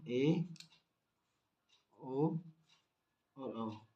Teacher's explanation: इन स्वरों का उच्चारण करते समय विवृत की तुलना में मुख का भाग थोड़ा कम खुलता है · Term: अर्ध विवृत स्वर